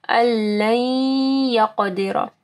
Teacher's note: نون ساکن کے بعد لام ہے، ٹھیک ہے، ادغام آ رہا ہے